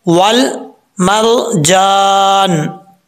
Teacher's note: वाव को पढ़ते वक्त होंठ गोल करेंगे। अगर होंठ गोल नहीं होंगे वाव को पढ़ते वक्त तो समझ लीजिएगा कि वाव अपने मखरज से अदा नहीं हुआ।